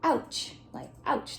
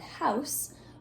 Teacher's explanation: O-U, make ow. You can almost hear a W in there, but there's no W. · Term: ow sound